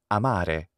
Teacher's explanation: It is an open, central, unrounded vowel, a.